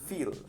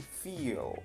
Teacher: Pero con prolongación ya no es llenar, es sentir, feel. Prolongación indica que hay una continuidad en la articulación del mismo sonido y es como una doble o triple I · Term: prolongación vocálica